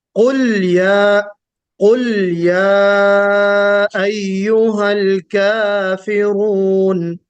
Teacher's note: लाम पर कलकला नहीं होना चाहिए, बगैर कलकले के आप पढ़िए